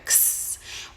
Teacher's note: We have an unvoiced stop K and an unvoiced fricative S, and they come together